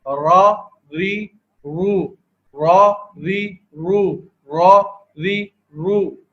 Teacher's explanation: اس کی ادائیگی کو بھی دیکھ لیتے ہیں کہ دیکھیں زبان کا سرا، جو زبان کا سرا ہے وہ اوپر کے جو مسوڑے ہیں سامنے کی طرف کے ان کے اوپر لگنے سے را کی ادائیگی ہو رہی ہے